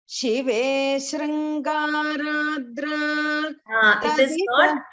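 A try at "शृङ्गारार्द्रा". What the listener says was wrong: It is not Shringaradra. It is Shringarardra. There are two letters. So you chant it as Shringaradra. It is Shringarardra.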